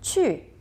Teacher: It goes from the highest to the lowest point. 去. You can sometimes say it lower. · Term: fourth tone